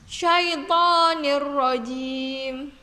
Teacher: tanwin kasrah Tain bertemu dengan huruf ro maka cara membacanya syaitonirrojim jadi roknya ditasydidkan dan tanpa mendengung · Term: idgham bilagunnah